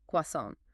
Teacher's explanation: The R sound is almost invisible, and the T at the end makes no sound at all.